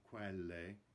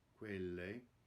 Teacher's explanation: Notice the closed E in quelle, the last word, it's not quelle, quelle.